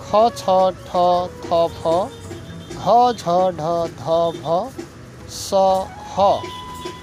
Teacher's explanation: बढी श्वास लाग्ने ध्वनिलाई महाप्राण ध्वनि भनिन्छ